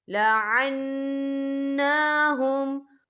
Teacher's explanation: यहाँ नून मुशद्दद है तो यहाँ पर गुन्ना भी होगा और नून के ऊपर खड़ी हरकत भी है, तो हम यहाँ 2 या 3 हरकत के बराबर खींच के पढ़ेंगे।